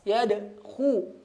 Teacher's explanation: Yadkhuluna atau isti'la ya. Diangkat pangkal lidahnya. Pangkal lidah ya di sini di belakang, ini di depan ya, kita anggap ujung lidah di sini yang terlihat. · Yadkhu ya monyong, kemudian ada tebal ya, huruf kha termasuk huruf tebal.